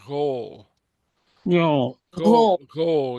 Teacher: It's what I call an open-throated guttural.